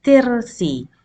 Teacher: This ra becomes light because of the previous kasra. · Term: light letter